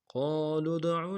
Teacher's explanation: یہاں پہ قاف کو موٹا پڑھنا ہے، قاف کے ساتھ الف مدہ ہے، ایک الف دال میں کھینچیں گے